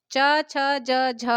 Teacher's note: पूरा च वर्ग आपका जो है वो स्पर्श संघर्षी के अंतर्गत आता है